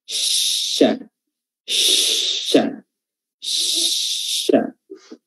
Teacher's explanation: Makanya itu yang dinamakan dengan at-tafashshi. Nah, di antara sifat huruf shin adalah at-tafashshi, yaitu tersebarnya udara · Ya, bertemunya itu tidak nempel, tapi diangkat, lidah kita diangkat dan hampir nempel dengan langit-langit bagian atas dan menyisakan beberapa celah atau menyisakan sedikit celah untuk bisa teralirnya atau tersebarnya udara di sekitar rongga mulut kita.